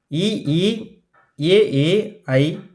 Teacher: வாயை திறத்தல் மற்றும் நாக்கின் அடி ஓரமானது மேல்வாய் பல்லை பொருந்துவதால் தோன்றும் உயிரெழுத்துக்கள்